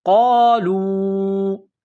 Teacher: یہ نقطوں والا قاف ہے، اس کو موٹا کرنا ہے، لام کو واو کے ساتھ ملانا ہے، یہاں پر مد ہے، اس کو تھوڑا کھینچنا ہے۔